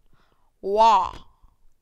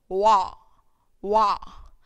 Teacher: So when you say this, wa, it's a sound where you are producing by using both the lips